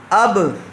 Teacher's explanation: آواز ٹچ ہوتی ہے، ٹکر کھا کر الگ ہو جاتی ہے ایک دم، تو اس کو قلقلہ کہتے ہیں۔